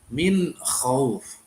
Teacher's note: ada nun sukun dan bertemu dengan kha. Kha adalah salah satu huruf idhar halki. Maka bacaannya sangat dijelaskan, harus jelas.